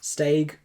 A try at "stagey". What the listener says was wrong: You sound like you're saying steak. Oh, it's not stagey. It's staggy.